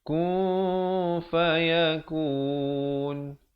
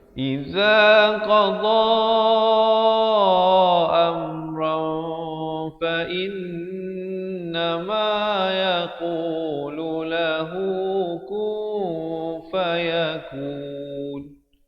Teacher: Ikhfa di sini asalnya ron, tetapi bila datang fa disembunyikan. Ikhfa maksudnya disembunyikan bunyi tanwinnya atau bunyi nunnya itu di belakang fa dengan kadar 2 harakat.